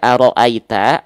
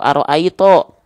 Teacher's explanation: Bisa dibaca dengan vokal A, bisa dibaca dengan vokal O. Kalau dia dibaca dengan vokal A, maka dia huruf yang tipis. Kalau dia dibaca dengan vokal O, maka dia huruf yang tebal. Huruf ta di sini dibaca aro'aita atau aro'aito.